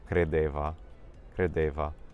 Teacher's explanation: So we can see the D sound and the B sound became a V